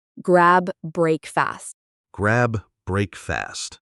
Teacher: Make off E. And for grab breakfast, we don't really stop between the words.